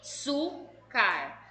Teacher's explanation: O su é o mais forte, então a sílaba tônica de açúcar é su.